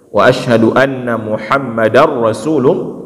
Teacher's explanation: langsung masukkan da ke dalam huruf ra jadi idgham bilagunnah